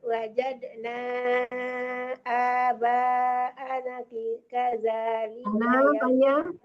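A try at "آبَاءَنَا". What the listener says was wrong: Ananya panjang, ananya panjang. Kalau ada bulat di atasnya baru nggak panjang. Kalau itu panjang ya.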